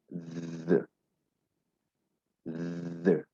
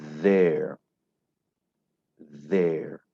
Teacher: The. La langue entre les dents, mais cette fois-là avec une petite vibration, avec votre corde vocale qui vibre un peu là.